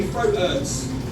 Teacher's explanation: Notice again, my becomes me, THs become F sounds, throat. T's are replaced by glottal T's, and we don't use H's because who needs them?